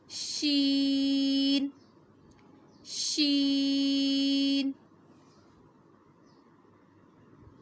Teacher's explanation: زبان کا درمیان والا حصہ جب تالو کے درمیان سے ٹکرائے تو ادا ہوتا ہے شین